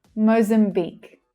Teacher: And the last syllable is the stressed syllable. It's louder and clearer.